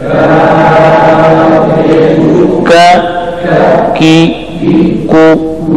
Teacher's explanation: تو اس کے ساتھ کاف کو بھی پڑھ لو، 7واں مخرج، زبان کا درمیان، چھٹا مخرج، زبان کی جڑ جب اوپر لہات یعنی کوے کے متصل تالو کے ساتھ سختی سے لگ جائے تو اس سے باریک کاف ادا ہوتا ہے